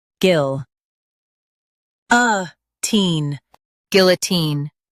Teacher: Stress guil and say teen clearly.